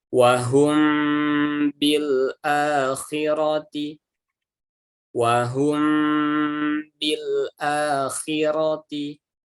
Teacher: Tapi kalau ikhfa syafawi ini bibirnya rapat, tapi suaranya tidak keluar dari hidung dengan sempurna ya. Jadi dia satar, samar-samar saja.